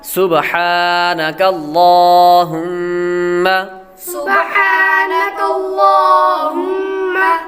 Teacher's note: لفظ اللہ کے لام سے پہلے حرف پر یعنی کاف پر زبر ہے تو لفظ اللہ کے لام کو پر پڑھیں گے۔ وبحمدک میں بھی ہا باریک، وتبارک اسمک یہاں پر را پر پڑھیں گے، را پر زبر ہو تو را کو پر پڑھتے ہیں۔